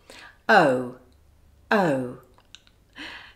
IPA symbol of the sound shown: əʊ